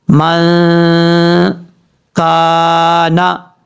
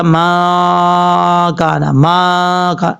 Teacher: نون ساکن کا اخفا کریں گے 1 الف کی مقدار